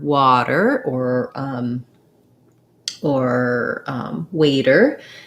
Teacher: usually when we have a t between two vowels like in the word water or um or waiter we use a flap it sounds more like a d